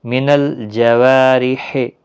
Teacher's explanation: جوارح را زیر کی وجہ سے باریک ہوگا، وا الف مدہ ہے۔